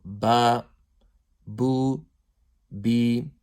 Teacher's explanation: Ba is pronounced from the wet portions of the lips. Now there are two parts of the lips: the outer portion, which is the dry portions, and the inner portion, which is the wet portions of the lips.